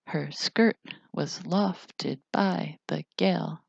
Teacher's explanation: the first syllable is unaccented and the second is accented and each foot is two syllables